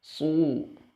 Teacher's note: sod, tebal, sangat tebal, memiliki sifat itbaq